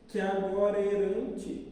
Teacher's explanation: dois a se juntam num só e fica com o único som